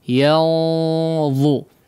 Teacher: Tidak rendah suaranya tapi ditebalkan ikhfanya atau gunnah pada ikhfanya